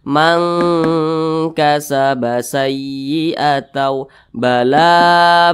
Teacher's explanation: didengungkan itu suaranya itu kita tahan atau kita panjangkan kira-kira dua ketukan atau dua harakat Man kasaba sayyiatau bala nah seperti itu dipanjangkan seperti itu didengungkan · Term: ikhfa Hakiki